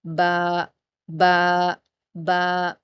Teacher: बा का मखरज हम देखते हैं तो बा जो होता है ना, वो आपके दोनों होठों का जो गीला वाला हिस्सा होता है, अंदर का, दोनों होठों का अंदर का जो गीला हिस्सा होता है जहाँ सलाइवा लगी होती है, तर वाला हिस्सा, उसको मिलाने से अदा होगा, क्योंकि बाहर वाला होंठों का हिस्सा सूखा होता है और अंदर तर होता है, गीला होता है।